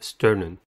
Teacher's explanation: sternum has two syllables and the stress is at the first one the first syllable is stir the first sound of the er